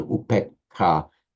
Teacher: But in Pali it becomes shorter, upekha, because it's followed by a doubled consonant, double k.